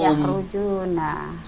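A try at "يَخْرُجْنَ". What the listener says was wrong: Yakhrujuna pakai kho. Yakhrujuna. Ulang lagi.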